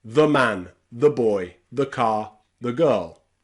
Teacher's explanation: that word the is said really quickly, really fast. The. And that's because we're using the schwa.